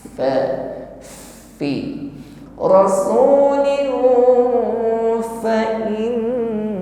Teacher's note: Mengucapkan lin kita samarkan atau kita sudah masuk, sudah siap pada makhraj yaitu huruf fa. Ketika berdengung rasulin, ini sudah masuk pada makhrajnya fa yaitu ujung gigi bertemu dengan bibir bawah.